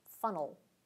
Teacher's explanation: we often skip right over that vowel sound and make the L syllabic so that it's the nucleus of the syllable. The notation is the same with the diacritic for the syllabic L, funnel.